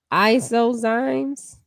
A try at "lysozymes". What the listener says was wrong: Lysozymes, I guess. That's an L.